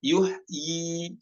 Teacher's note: pada kata yuhyi di sini dibacanya dua harokat, ya-nya ada. Walaupun ya-nya sama-sama ada di ujung ya, dibaca tetap yuhyi, bukan dibaca sukun, bukan yuh, bukan, namun dibaca yuhyi seperti itu.